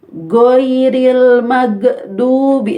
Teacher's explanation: Kalau go pakai G bahasa Indonesia, itu go-nya ketika sukun, ghainnya ketika sukun nanti akan mantul